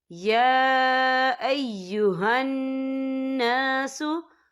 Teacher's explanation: या के ऊपर खड़ी हरकत है और इस पर छोटी सी मद भी है, तो हम यहाँ 3 या 4 हरकत के बराबर खींचेंगे।